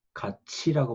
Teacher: 여기 여러 가지 현상을 예를 들었는데, 티읕 받침이지만 갓티라고 발음하지 않고 갓치라고 발음하죠. 그러니까 티읕은 뒤에 모음에 갖다 붙어서 연음 현상이 일어나는데, 그 연음 현상만 일어나는 게 아니라 이 티읕이 치읕으로 바뀝니다.